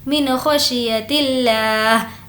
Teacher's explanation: لفظ اللہ کو باریک پڑھیں گے کیونکہ لفظ اللہ سے پہلے زیر ہے